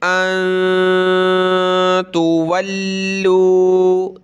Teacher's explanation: نون ساکن ہے، اس پہ ہم نے ناک میں آواز پیدا کرنی ہے. ان تولوا، تا پیش تو، واو لام زبر ول، لام واو پیش لو، تولوا سخت کریں گے لام کو تشدید کی وجہ سے.